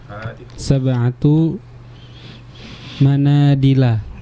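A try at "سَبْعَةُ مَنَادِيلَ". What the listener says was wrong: Manadila, dinya panjang ya. Manadilu. Sab'atu manadila, betul. Sab'atu manadila, ya. Sab'atu manadila.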